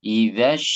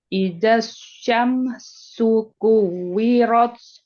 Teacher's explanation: Jadi dari tengah lidah. Kalau yang ash itu tengah lidah terangkat.